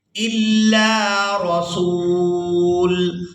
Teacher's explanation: حمزہ کو لام مشدد کے ساتھ ملائیں گے، لام کو الف مدہ کی وجہ سے کھینچ کر ادا کریں گے